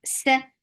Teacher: You have given this lam temporary sakoon. This temporary sakoon has changed this 2 counts long vowel into 4 counts, and this is called mad arad lis sakoon